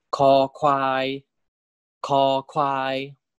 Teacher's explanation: The first one is kho kwai, kho kwai. Remember, there's aspiration, there's a puff of air when you pronounce kho, right? That's why it's spelled with a H here.